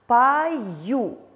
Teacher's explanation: опять же юна ставит после гласной поэтому дает два звука пою мы слышим звук j после о получается что слове пою у нас три буквы но 4 звука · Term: звук йод